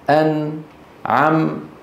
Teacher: النون والميم الساكنتان المظهرتان غنتهما ناقصة، يعني فيهم مط قليل